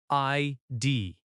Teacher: ID is pronounced as two letters, I D. Stress on both letters equally.